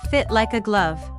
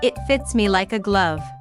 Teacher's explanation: Remember to link like and a together when you speak fast.